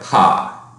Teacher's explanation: that stop has a burst with a spectrum that is distinctive given that bilabial place of articulation so it has that concentration